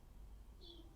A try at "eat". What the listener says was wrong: Very good.